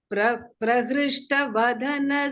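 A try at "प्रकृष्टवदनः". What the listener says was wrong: Not Vadanas. It is Vadanash. Ish.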